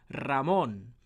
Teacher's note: it's got that bit of a trill to that rolled R coming through to it because it is the first letter of a word. So produce the single R.